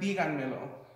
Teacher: you can hear that the accent and the emphasis is on the fourth syllable